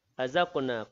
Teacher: qaf yang sukun dalam kalimah tersebut, qalqalah, sughra, berdetak kecil